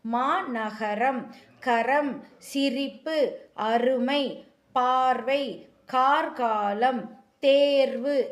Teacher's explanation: நாவின் நுனி மேல் அண்ணத்தில் முதல் பகுதியை தொட்டு வருவதால் ரகரம் தோன்றுகிறது. அதாவது நாவின் நுனி மேல் அன்னத்தினுடைய முதல் பகுதியில முன்னாடியே தொட்டு வர்துனால ரகரம் பிறக்குது. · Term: இடையின ரகரம்